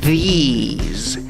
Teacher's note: Esta, la número 2, tiene una I larga y acaba en Z, aunque se escribe con S.